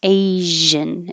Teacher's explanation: this is the same sh as rush but with voicing asian and this again is the american pronunciation of this word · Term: zh